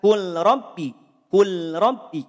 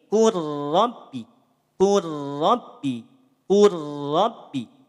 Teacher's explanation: harakat hukumnya idgham mutaqaribain leburkan maka di sini tidak perlu ditahan leburkan saja huruf lam sukun pada huruf ro